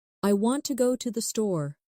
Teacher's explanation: The stress is on want and store. The words to and the are much softer. This creates the rhythm of English. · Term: stressed